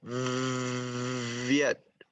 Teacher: In the word Viet, the V is voiced.